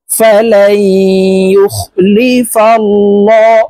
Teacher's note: আল্লাহ শব্দের আগের হরফে জবর আছে, তাই এই লামকে ল অর্থাৎ মোটা করে পড়ব